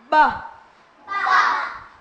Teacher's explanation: Khi phát âm bờ miệng cô mím chặt luồng hơi bị môi cản cô phải bật môi để phát âm